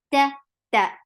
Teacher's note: The sound is very clear. This is a shidda sound. There is no hums whatsoever. The sound is very short.